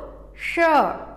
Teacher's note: इसका उच्चारण हम तालु से करते हैं, और उसको तालु मतलब ऊपर, जो दांत के ऊपर जो जगह है, जैसे देखो श, जीभ को थोड़ा सा मोड़ो और बोलो श।